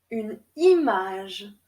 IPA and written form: yn imaʒ (une image)